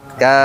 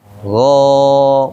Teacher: Kalau memanjangkan berarti tergantung dia nempel huruf apa. Kalau nempel di huruf tipis bunyinya A dia. Nempel huruf tebal bunyinya O dia.